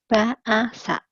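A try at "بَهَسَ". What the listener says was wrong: Bukan A ini mah, Bu. Ulang lagi.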